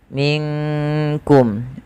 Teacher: nunnya samarkan ke huruf kaf, yang dimana kaf makhrajnya dari pangkal lidah kita beririsan dengan langit-langit yang ada di atas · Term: ikhfa hakiki